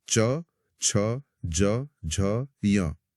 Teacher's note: जीभ तालु को छू रही है। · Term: च वर्ग